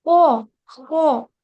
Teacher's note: अगर आप खराश नहीं लेके आओगे ना तो फिर वो हा की तरह बन जाएगा।